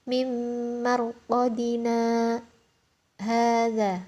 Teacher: jadi berhenti di huruf na 2 harokat tanpa bernafas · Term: saktah